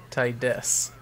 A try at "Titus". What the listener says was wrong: Not Titus. Not Tit-us.